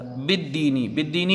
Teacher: لام تعریف کا ادغام شمسی ہوگا